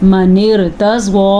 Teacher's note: देखा जाए तो रॉ साकिन है और उससे पहले ज़ेर है, तो ये रॉ तो बारीक पढ़ी जाएगी, लेकिन नहीं, ये रॉ पुर पढ़ी जाएगी।